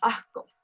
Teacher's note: El ceseo también se ve representado con la aspiración o elisión de la S a la mitad de la palabra o al final de una sílaba. Por ejemplo, asco no se va a pronunciar como asco, sino se va a pronunciar como asco.